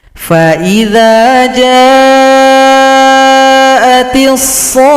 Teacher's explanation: Berikutnya masih surat Abasa, sekarang ayat 33. Panjangkan shad 6 ketukan atau 6 harokat, tasydidkan ke huruf kha. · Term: Mad lazim mutsaqqal kalimi